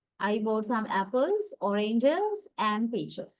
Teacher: Falling intonation. Apples and oranges are pronounced with rising intonation. · There are 3 items that have been listed. Then we raise our intonation at the first 2 items in the list and fall the intonation at the last item because there are 3 items. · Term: intonation in listing